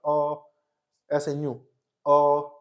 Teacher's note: अब आगे कि जी अगर मैं बात करूँ कि इसी ओ को मैं जीभ के आधार पर, तो जीभ के पिछले हिस्से से निकलता है, मतलब पिछला हिस्सा जो हमारा वो उसमें बदलाव आता है जब हम ओ कहते हैं। ओ यानी कि जीभ का पिछला हिस्सा नीचे की तरफ दबता है हल्का-सा